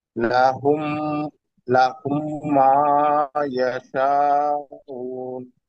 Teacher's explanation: লাহুম মা এটা চার আলিফ টানতে হবে